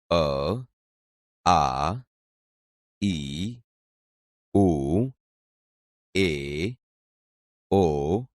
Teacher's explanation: આ ધ્વનિ મોઢામાં અવરોધાયા સિવાય સીધો જ સ્વર પેટીમાંથી આવતો અનુભવાય છે